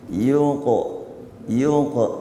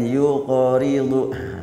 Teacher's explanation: dilatih untuk Qalqalah huruf qaf murni sakin